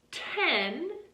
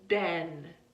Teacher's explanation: So with that t sound, it's voiceless, and with that d sound, it's voiced.